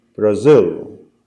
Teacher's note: we have 2 syllables in the name and the emphasis is on the second syllable